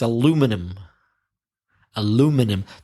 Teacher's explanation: The stress changes to the second syllable and the pronunciation. Aluminum. So there are 5 syllables in the British pronunciation of aluminium.